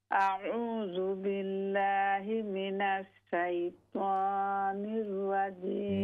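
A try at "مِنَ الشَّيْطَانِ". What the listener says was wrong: मिनश, शीन को दुरुस्त करें।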